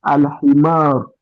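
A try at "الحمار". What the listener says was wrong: al-himaru. So pronounce the ending as well.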